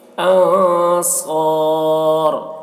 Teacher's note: نون میں اظہار ہوگا، نون کو جلدی پڑھیں گے، من دیکھیے اس نون کے بعد صاد ہے حروف اخفا میں سے تو اس نون میں اخفا کریں گے